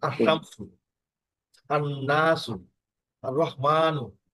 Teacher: লাম পড়া হয় না, এবং পরের অক্ষরটিতে তাসদিদ দিয়ে পড়তে হয় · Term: হরফে শামসি